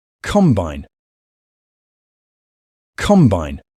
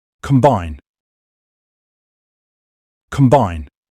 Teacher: A combine, the stress is on the first part.